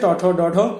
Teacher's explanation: জিহ্বার অগ্রভাগ মূর্ধা স্পর্শ করে উচ্চারিত হয় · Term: মূর্ধন্য ধ্বনি